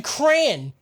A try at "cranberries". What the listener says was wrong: look at how cran is spelled c-r-a-n and then how you're pronouncing crayon